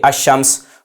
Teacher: اس کو میں یوں سمجھے آپ کہ اگر کوئی اس کو پڑھتا ہے الشمس تو یہ درست نہیں ہے، اہل عرب کے طریقے کے مطابق یہ غلط ہے الشمس پڑھنا، اس کو پڑھا جائے گا الشمس، یعنی یہاں پر لام ساکن ہو جائے گا اور ادغام کر کے پڑھیں گے الشمس، حمزہ کو شین کے ساتھ ملائیں گے اور پڑھیں گے الشمس